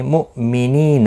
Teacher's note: مؤمنین حمزہ ساکن کو جھٹکی کے ساتھ ادا کریں گے۔ نی یا مدہ ہے، ایک الف کی مقدار کے برابر کھینچ کر پڑھیں گے۔